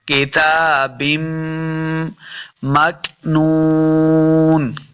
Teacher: काफ साकिन है, मोटा नहीं करेंगे, ना ही इसके ऊपर कलकला करना है।